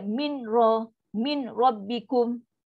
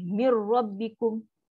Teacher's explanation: So bila dia dah masuk 100% dia dah tak ada lah. Dah hilang dah bunyi nun. Tak ada bunyi dah. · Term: idgham bila gunah